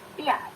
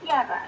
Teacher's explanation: Jadi ketika dari bunyi atas, bunyi tinggi, close, kemudian ke bunyi bawah, itu pasti memunculkan bunyi iyah. Dan lidahnya itu mengarah ke arah palatal.